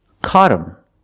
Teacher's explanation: him is not a stressed word so the H is silent